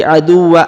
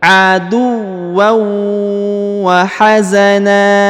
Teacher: ditahan ditekan dua harakat lalu didengungkan